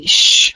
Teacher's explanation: the tongue raises towards the middle part of the roof of the mouth